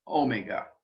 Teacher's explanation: So we had phi, then we had chi, then we have psi, and the last letter of the Greek alphabet, omega, with the accent on the first syllable, omega, the long O sound.